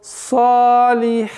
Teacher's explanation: удлинение, долгота в размере двух огласовок